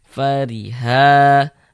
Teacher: huruf ro memiliki harakat kasrah. Maka huruf ro juga dibaca dibaca tipis, baca tarkik. Tipiskan huruf rnya fariha.